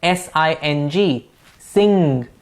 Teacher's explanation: the back of the tongue is the active articulator and the soft palate is the passive articulator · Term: velar consonants